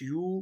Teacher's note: کیونکہ واو ساکن سے پہلے پیش ہے تو واو مدہ ہے، ایک الف کے برابر کھینچ کر پڑھیں گے۔